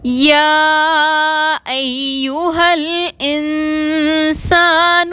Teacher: حروف قلقلہ کے علاوہ تمام ساکن حروف کو بغیر جھٹکے کے ادا کیا جاتا ہے۔ نون ساکن کے بعد سین آ رہا ہے، اخفا کریں گے